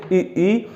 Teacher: जब हम इनका उच्चारण करते हैं ई, तो जीभ का जो आगे वाला पोर्शन है वह इनके उच्चारण में सहयोग करता है। तो ई, ए, ऐ ये अग्रभाग से उच्चारित होते हैं।